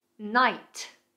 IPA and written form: naɪt (Knight)